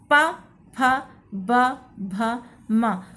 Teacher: कहीं ना कहीं आप देख रहे होंगे कि आपके ओष्ठ आपस में मिल रहे हैं। इसलिए इनको ओष्ठ वर्ण कहा जाता है।